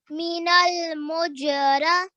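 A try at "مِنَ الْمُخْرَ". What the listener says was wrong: Oh, sorry, it's not this. That's a kha. Go ahead and read it again.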